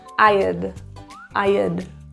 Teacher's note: When we contract had with other words, we're reducing the length of the vowel. Kind of think of it like just an sound. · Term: contraction